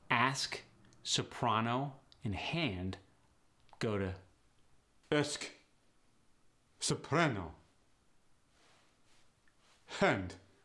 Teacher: The short A goes to the E sound.